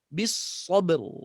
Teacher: Di tempat sad tebal, ba tipis, ra tebal.